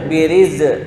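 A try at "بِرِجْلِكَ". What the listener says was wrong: Bukan biriz, itu za, bukan jim. Birij, ja, jiju, birij, urqud, birij. Bukan biriz, birij, birij.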